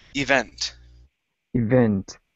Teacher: The word is pronounced event. The stress is at the very end. Instead of event, event.